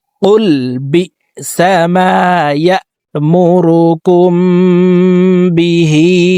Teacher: بئس ما يأمركم বিহি কুম এখানে ইকফায়ে শাফাবি গুন্নাহ করে পড়ব মিম সাকিনের পরে ইকফায়ে শাফাবির হরফ বা আসছে এই কারণে এই মিম সাকিনকে গুন্নার সহিত পড়তে হবে